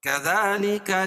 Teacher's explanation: کھڑا زبر قائم مقام الف مدہ کہ اس کو ایک الف کے برابر کھینچ کے پڑھیں گے